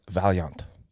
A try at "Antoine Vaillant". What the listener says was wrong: The T is silent. The double L is like a Y.